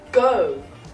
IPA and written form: gəʊ (go)